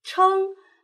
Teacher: 声母是翘舌音吃，韵母是后鼻韵母嗯